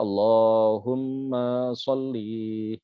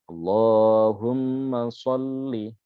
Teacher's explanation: Nah ini yang ketika menyelaraskan dengan lagu itu kadang-kadang dibaca panjang, diseret-seret. Ma-nya sudah panjang, li-nya juga dipanjangkan.